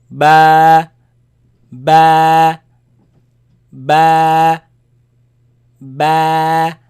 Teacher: it is elongated it is stretched because of the alif following it